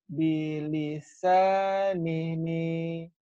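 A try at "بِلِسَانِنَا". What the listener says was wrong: Bilisan Nini. Nini kalau Nini di Sunda mah nenek-nenek. Nina.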